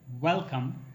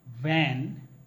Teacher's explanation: when we pronounce W like welcome, we open our mouth completely. When we say van, our upper teeth touches the lower lip.